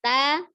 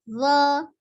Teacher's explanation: Ta, ujung lidah ada di pangkal, gigi seri bagian atas. Kemudian zo-nya, ujung lidahnya ada di ujung. Ya, ujung gigi seri bagian atas.